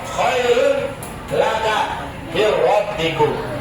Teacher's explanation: Idgham bila guna masuk dengan tidak dengung. Huruf lam ro.